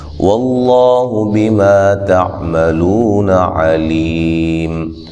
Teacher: لفظ اللہ کو موٹا ادا کریں گے، اس سے پہلے حرف پر زبر ہے